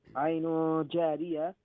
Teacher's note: Because after Tanween Dhamma, there's Jim, and Jim is one of the 15 letters of Ikhfa. So you're gonna hide the noon sound, and there'll be a light nasal sound in the nose. Jariya, there's Alif Madda, and the Jim will be stretched, and this is known as Mad Asitabi.